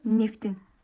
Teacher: İkinci olaraq, saitlə başlayan şəkilçi qəbul edərsə, t d-yə çevriləcək. Yəni cingiltili qarşılığına keçəcək.